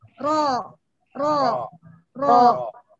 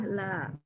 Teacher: Jadi ro tetap di atas, kalau lam dia dimiringkan ke bawah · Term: sifat al-inhiraf